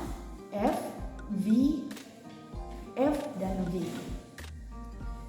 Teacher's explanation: And then second, labiodental. Labiodental itu ketika lower lip touch the upper teeth. Jadi ketika bibir bawah menyentuh gigi atas.